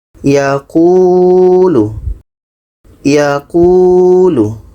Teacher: Qu dibaca panjang karena ada Wau mati yang didahului oleh vokal depan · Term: Mad Asli, mad asli